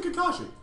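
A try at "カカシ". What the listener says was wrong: Kakashi, like you wouldn't stress one ka over the other. Like it wouldn't be Kakashi, because that would, like, there'd be a difference between the ka's. It'd be Kakashi.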